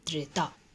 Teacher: त्र का उच्चारण स्थान दंत प्लस मूर्धा से होता है।